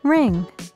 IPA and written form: rɪŋ (Ring)